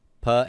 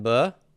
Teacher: the same stop consonant except for voicing cut and go the same stop consonant except for voicing too